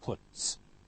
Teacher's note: t, voiceless, so followed by also voiceless s